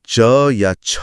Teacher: जीभ मुंह की छत से यानी तालू से टकराती है। बिल्कुल। इसे तालव्य ध्वनि कहते हैं।